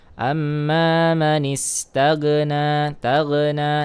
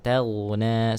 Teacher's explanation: huruf ghain itu bukan termasuk daripada huruf qalqalah. Dia hanya mengalir suaranya.